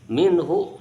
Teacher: Minhu dibaca jelas, izhar halqi dibaca jelas karena bertemu huruf yang keluar dari tenggorokan. Ha salah satu huruf yang keluar dari tenggorokan sebelah bawah.